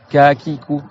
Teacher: Tu sens que c'est vraiment le fond de ta langue qui touche le haut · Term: le ka